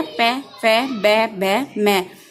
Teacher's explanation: इन्हें बोलने के लिए हमने दोनों होठों की सहायता ली। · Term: ओष्ठ